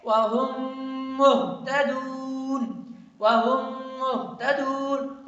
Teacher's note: تو اس میم کو اس میم کے اندر ہم داخل کرتے ہیں اور اس دوسرے میم کو پڑھتے ہیں، پہلے والے میم کو نہیں پڑھیں گے اور ساتھ ساتھ میں میم میں ناک میں آواز لے کے جائیں گے یعنی غنہ کریں گے